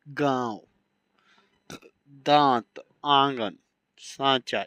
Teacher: जिस ध्वनि के उच्चारण में हवा नाक और मुख दोनों से निकलती है उसे अनुनासिक कहते हैं।